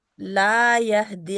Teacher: لا کو لمبا کریں، دو حرکات